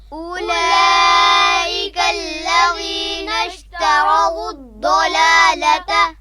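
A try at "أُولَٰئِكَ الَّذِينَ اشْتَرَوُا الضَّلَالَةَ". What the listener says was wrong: لفظ اولا میں لام کو اور زیادہ لمبا کریں، یعنی 5 الف کے برابر اس کی آواز ہونی چاہیے. اولئک الذین اشتروا الضلالۃ.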